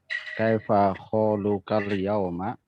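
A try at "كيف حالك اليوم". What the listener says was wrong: Kaifa ha, bukan kha. Kaifa haluka?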